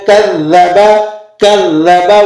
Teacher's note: کذب پہ ذال پر تشدید لگی ہوئی ہے، اسے آپ سختی کے ساتھ ادا کریں گے ذرا رک کر